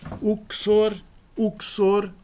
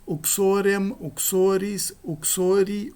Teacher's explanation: possui o nominativo singular em or com O breve, e nos demais casos esse O será longo. Uxor, que significa esposa, possui o genitivo uxores com O longo.